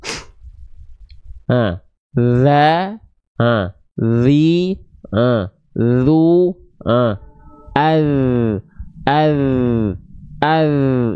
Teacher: Jadi ujung lidah disentuhkan ke ujung gigi sari atas kita. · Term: huruf dzal